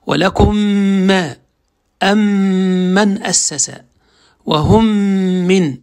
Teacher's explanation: الإضغام يعني تضغم الميم بغنة في مثلها، يعني في ميم أتت بعده، لذلك تكون الميم الثانية مشددة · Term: إضغاما صغيرا